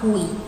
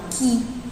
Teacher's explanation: Quando a gente pronuncia quilômetro, principalmente aqui a sílaba ki, a gente não pronuncia o U, A gente não fala kiu, a gente não fala kui, a gente fala ki, não é isso?